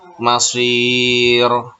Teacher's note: Masir, nah itu mad arid lis sukun. Asalnya masiru tidak sukun, tapi karena diwakafkan menjadi sukun, maka disebut dengan mad arid lis sukun